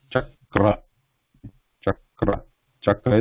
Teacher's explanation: So it is cha and then ka and ra. Ka is a consonant, no vowel, and then the following is the ra here.